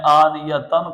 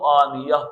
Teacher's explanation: حالت وقف میں اس گول تا کو ہم ہا سے بدل دیں گے۔ اسی قاعدے پر عمل کرتے ہوئے ہم نے آنیتن کو آنیہ پڑھا، آنیتن کو آنیہ پڑھا۔